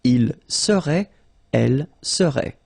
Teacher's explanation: So final T is not pronounced.